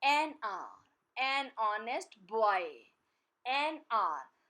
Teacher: The word is beginning with H, which is a consonant, but here the sound of H is silent. It's R, a sound, which is a vowel sound.